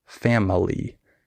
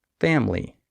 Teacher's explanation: just don't say the middle syllable it's just family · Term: skipped syllables